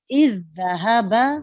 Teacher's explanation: ساکن ذال کو متحرک ذال میں ملا کر اس طرح پڑھا کہ مشدد ادا ہوگا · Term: ادغام